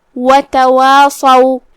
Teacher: कलिमत तवासौ में यहाँ हर्फ स्वाद है, स्वाद हुरूफ तफ़ख़ीम में से है, तो हम उसे भारी आवाज में अदा करेंगे